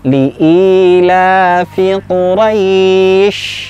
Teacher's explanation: mat tabi'i hanya satu ayunan saja, tidak terlalu panjang